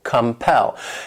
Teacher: compel. This word has 2 syllables and the stress is on that second syllable, compel.